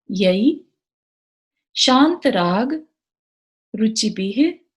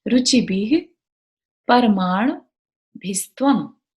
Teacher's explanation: विसर्ग है तो ह का साउंड आना चाहिए